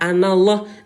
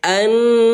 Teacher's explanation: Hukum tajwidnya namanya gunnah. Ya, jadi wajib nun bertasydid dibaca tahan 2 ketukan, hukum tajwidnya menjadi gunnah. Jadi jangan dibaca anallah, nanti mananya rusak.